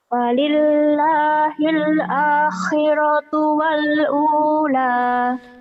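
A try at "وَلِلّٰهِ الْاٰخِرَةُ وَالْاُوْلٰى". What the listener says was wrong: kamu masih ditekan-tekan. Walillahil akhiratu wal. Oh, jangan ditekan-tekan. Coba jangan ditekan-tekan.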